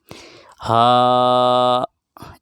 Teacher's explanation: हा गले की सीने की तरफ वाले हिस्से से अदा होता है, वहीं से हमज़ा भी अदा होता है।